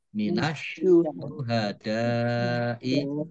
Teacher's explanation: karena tidak dibaca alif lamnya, langsung masuk ke huruf berikutnya yaitu shin, ditandai shinnya ada tasdidnya. Shin dibaca double. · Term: alif lam syamsiyah